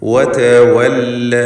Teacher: വാവുകൾ 2 ചുണ്ടുകളിൽ നിന്ന് തന്നെ വരണം. വതവല്ല എന്ന് താഴെ ചുണ്ടും മേലെ പല്ലും ചേർത്ത് പറയരുത്.